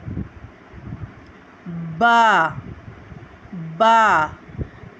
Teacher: با کو ہم دونوں ہونٹوں کے تر حصے سے ادا کرتے ہیں